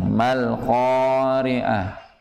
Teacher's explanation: bacanya dengan bacaan sifat bainiyah, dialirkan namun alirannya tidak terlalu panjang